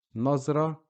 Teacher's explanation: Nazra, we're not pronouncing ta marbuta. We're just pronouncing up to the last vowelized letter before it